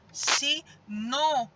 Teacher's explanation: O no sai com mais intensidade e nele nós temos também um acento, o acento circunflexo.